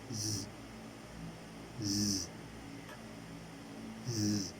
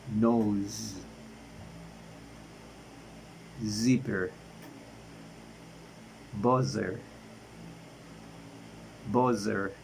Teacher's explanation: According to the place of articulation, it is alveolar. According to the manner of articulation, it is fricative.